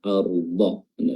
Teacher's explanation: pelafalannya dan letaknya yang benar yaitu di tepi lidah Anggaplah ini ini lidah ini tepinya bertemu dengan gigi geraham ya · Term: huruf dad